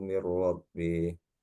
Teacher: idgham bila gunnah Pak. Non mati ketemu dengan huruf ra